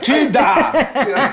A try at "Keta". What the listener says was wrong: The D is silent.